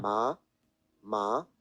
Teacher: Very quickly all the way up to a high pitch. Still not an uncomfortable one. Ma. So first tone ma. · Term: Second tone